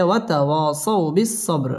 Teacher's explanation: বা কলকলার হরফ ধাক্কা দিয়ে পড়তে হবে ওয়াতাওয়াসাউ বিস-সাবর র পুর হবে এবং এখানে ওয়াকফ করতে হবে ওয়াতাওয়াসাউ